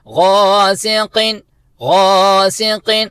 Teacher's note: تو ہم پڑھیں گے غاسقین غاسقین، قاف پر طریقے کے ساتھ کیونکہ قاف 2 نقطے والا، اس کو پور طریقے سے فل ماؤتھ کے ساتھ ادا کریں گے